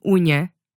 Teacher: an N made using the middle of your tongue against the roof of your mouth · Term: Ny